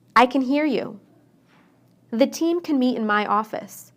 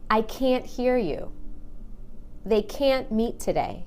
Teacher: But when I say can't, I stress that A and make it really long. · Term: stressed A